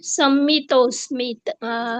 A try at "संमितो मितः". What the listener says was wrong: संमितो मितः. स्मितः नाहीये, संमितो मितः. स्मितः नाहीये, मितः. अवग्रह आहे. हा, संमितो मितः.